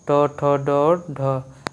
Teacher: जो ट वर्ग आएगा वही आपका मूर्धन्य होगा